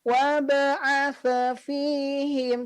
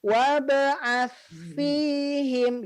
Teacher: wab'ath huruf sa ini dia tidak perlu memantul. Jadi tidak wab'ath fihim, cukup wab'ath fihim gitu ya.